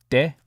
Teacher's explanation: And then de is kind of more like with your tongue, rather than like D, how we do it. It's more like de, with your tongue right behind your teeth. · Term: soft D